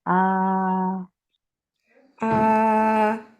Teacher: আ মাত্রা জাউফ থেকে আসবে, হাউস থেকে না